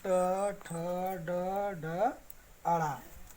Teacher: ट वर्ग का उच्चारण स्थान मूर्धा।